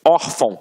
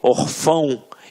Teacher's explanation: reparem que a sílaba tônica está na penúltima sílaba. Por isso é uma paroxítona.